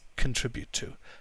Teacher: we don't pronounce the oh very strongly